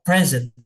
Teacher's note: present itu berarti dia menekannya di awal